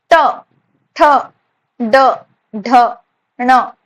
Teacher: जब हमारा टंग मूर्धा को छुएगा तो जो वर्ण उस वक्त निकलेगा हमारे मुंह से, वो वर्ण को हम मूर्धन्य वर्ण कहते हैं